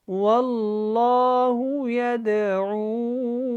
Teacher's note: یہاں پہ اللہ والا لام اس سے پہلے زبر ہے تو اس کو ہم نے موٹا پڑھنا ہے. یدعو یہاں پہ مد ہے، اس کو کھینچ کے پڑھیں اور دال کے اوپر قلقلہ ہوگا